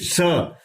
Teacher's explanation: पहले बता चुका तालव्य क्यों इसका नाम, क्योंकि तालु से बोला जा रहा है।